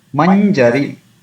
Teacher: So according to the rule, this we can see the combination of consonants here, nya and ja. So the first one, nya, should be pronounced till the period of one matra